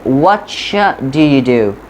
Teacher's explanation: if a word is ending with a T and next word is starting with a D, like what is ending with a T and do is starting with a D, so here we create a ch sound